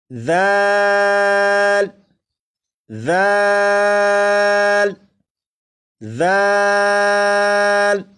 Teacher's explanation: زال کو بھی 3 الف کے برابر کھینچ کر پڑھیں گے،